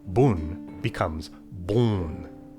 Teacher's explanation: Vowels before N and M will flow through the nose now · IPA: [bʊn] becomes [bõn], [bʊn]